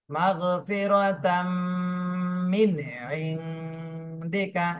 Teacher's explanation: এখানে আইন ইজহারের হরফ, এই জন্য এই নুন সাকিনে স্পষ্ট করে পড়তে হবে।